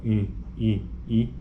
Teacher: está sendo descrito como alta então portanto a língua move-se para cima o máximo possível